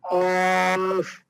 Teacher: জিহ্বার গোড়া হতে তালু দিয়ে ধাক্কা দিয়ে পড়তে হবে